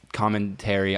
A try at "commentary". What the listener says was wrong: The way you just said commentary, it sounded like you said a commentary, like COMMON.